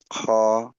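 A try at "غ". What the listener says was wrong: খ না এটা গইন গ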